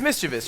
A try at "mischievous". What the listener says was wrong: It would be mischievous. You know, there's no I after the V.